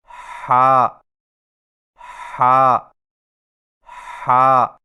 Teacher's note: ہا کی ادائیگی میں زبان کی جڑ کو حلق کی طرف مضبوطی سے دباتے ہوئے باریک اور رگڑ کھاتی سانس میں پڑھیں، یعنی ہا ہا ہا، اور یاد رکھیں کہ ہا کی درست آواز کی پہچان یہ ہے کہ ادائیگی کے وقت گلے میں کچھ دباؤ سا محسوس ہوگا، یعنی ہا ہا ہا۔